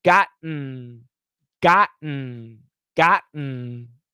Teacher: got stop t and then the same position is the n so the tongue never moves once you stop the t the tongue never moves gotten gotten